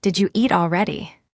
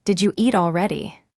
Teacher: Did you hear how did you became didja?